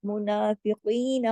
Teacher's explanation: नून के ऊपर खड़ी जबर है, एक अलिफ के बराबर खींचेगा , मुनाफिकीन, काफ मोटा और